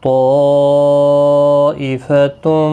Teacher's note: یہاں پر مد متصل بھی ہے، 4 الف کی مقدار کے برابر کھینچ کر پڑھیں گے